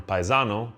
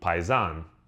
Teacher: The O was dropped because in many Southern Italian regional languages and dialects, the last vowel is often times not pronounced, especially heavily in the Neapolitan language.